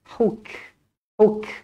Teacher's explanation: pastikan huruf Kaf yang bertanda mati dibaca Hamas dibaca berangin